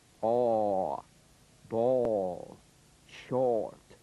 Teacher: The midway lip opening produces the vowel sound aw, as in ball.